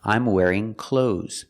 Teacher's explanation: The TH is silent.